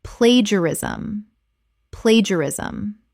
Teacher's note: 4 syllables. The middle syllables collapse together.